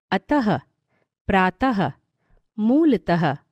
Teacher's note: विसर्ग का उच्चारण ह के समान होता है